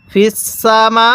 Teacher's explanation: সিনের মধ্যে টান দিবেন না, মিমের মধ্যে টান হবে